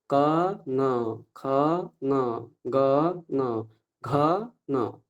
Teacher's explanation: ক যেখান থেকে উচ্চারিত হচ্ছে সেখান থেকে ঙ উচ্চারণ হবে।